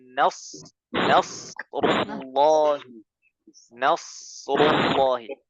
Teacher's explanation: Seperti kita membaca huruf sin, sa, tapi lidah yang belakang dinaikkan, ya. Lidah yang belakang dinaikkan. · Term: huruf shad